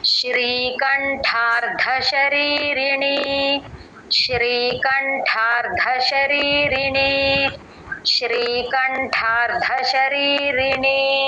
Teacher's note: ఠ మహాప్రాణం రా కింద ధ వత్తండి అది రెండు మహాప్రాణాలు